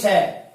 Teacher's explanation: पहला जो श लिखा हुआ है यह है तालव्य श। इसका उच्चारण स्थान तालु है, इसलिए इसका नाम है तालव्य श